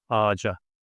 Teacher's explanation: the last consonant, ç, is an explosive one, so it needs to alternate itself to the softer version and becomes ağaca